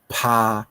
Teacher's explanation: 共啊，造成你发音听起来无共啊，吼，啊，过来，咱即平平即抓内底呢，你也看啊，咱佫有分哦，吼，送气啊▁，minus▁送气甲▁plus▁送气，这是啥物意思？共款的道理▁，plus▁送气就是有送气▁，minus▁送气就是无送气的意思啊，啊，咱讲语言学顶下伊定定拢用。minus▁加▁plus▁来表示啊，所以▁plus▁送气就是有送气▁，minus▁送气就是无送气啊，啊，伊拢用有无安尼哈，所以你看▁p▁啊，即个就有送气的啊▁，p▁啊个加上一个送标▁h，▁这就是有送气的▁p▁啊比如拍练斗的拍，吼，所以即两个无共吼。倒手柄即个是八清音无送去的，正手柄即个是清音有送去吼，拍， 你会当发现空气较济，为你的喙喷出来